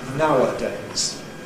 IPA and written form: ˈnaʊədeɪz (nowadays)